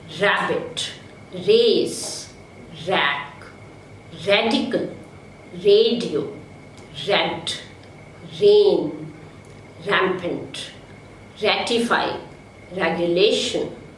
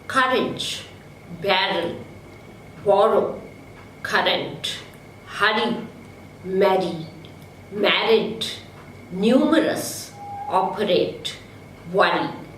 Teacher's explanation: the air from the lungs escapes through the space between the tip of the tongue and the post-alveolar region without any friction. This sound is voiced. So we have R as frictionless, voiced continuant.